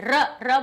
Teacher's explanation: मूर्धा से टकरा रही है जीभ के, नहीं मूर्धा से निकला, मूर्धन्य कहेंगे इसको।